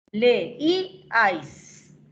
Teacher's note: Fíjate que entre la E y la I hay una separación, es un hiato. Entre la I y la A es otro hiato, otra separación. · la I es cerrada, tónica, y está entre dos abiertas. Como es cerrada tónica, la I se va a separar de las dos abiertas.